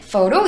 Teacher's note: 윗니빨이 우리 아랫입술에 닿아 떨어지는 photo